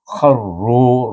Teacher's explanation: Kha iaitu hujung halqum makhrajnya bergabung dengan huruf ra baris di atas, baca dengan tafkhim. Kharru, ru baris depan ra itu bertemu dengan waw, baca dengan mad asli kharru sujjadan.